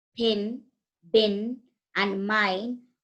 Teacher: the initial sounds in the English words pin, bin, and mine are articulated with the lips